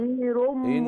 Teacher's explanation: زودي الغنى شوية، عندنا في الآية دي ثلاث غنى